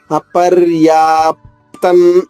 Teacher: అనుస్వర ఉచ్చారణ న పుల్లుగా చెప్పాలి ఎందుకంటే అనుస్వర తర్వాత ఏముంది త ఉంది